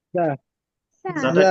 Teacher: ঝিঝি পোকার মতো পাতলা আওয়াজে বাতাস বের হবে